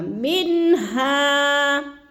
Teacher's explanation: اظہار ہوگا۔ اظہار کا معنی ہوتا ہے کہ لفظ کو ہم نے ظاہر کر کے پڑھنا ہے، یعنی ادھر غنہ نہیں کرنا، اخفا نہیں کرنا